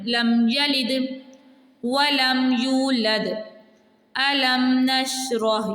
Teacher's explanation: میم کو اس کے مخرج سے بغیر گنہ کے جلدی سے ادا کیا جائے گا